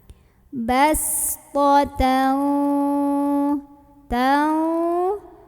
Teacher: namanya sofir, jadi berdesis seperti suara ular